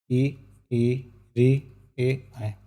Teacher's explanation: इसमें जीभ का आगे वाला भाग थोड़ा सा ऊपर नीचे उठता है, इन्हें हम अग्र स्वर कहते हैं।